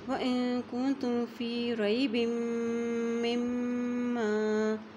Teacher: جب میم کے اوپر شد آ جاتی ہے تو پھر وہ وہاں پر بھی غنہ کیا جاتا ہے